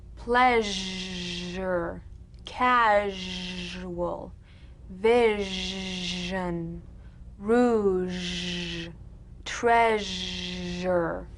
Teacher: All suggestion of the SH must vanish. Feel the SH overridden by the deep rumbling vibrations of the ZH, resonating against the teeth and the tip of the tongue. If you don't feel your teeth vibrating on this sound, you're not making a good Z.